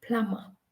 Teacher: But did you know that Plumber, the B is actually silent, and the actual word that we should say is just plumber?